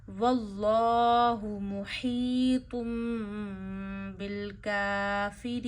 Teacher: تو لفظ اللہ موٹا پڑھیے، اللہ کو کھینچیے، یا مدہ کریے، طا کو موٹا پڑھیے اور اقلاب کریے یعنی میم کو پڑھیے اور غنہ کریے، کاف پہ کھڑی زبر کھینچیے، یا مدہ تین انگلیوں جتنا وقف آنے کی وجہ سے کھینچیے۔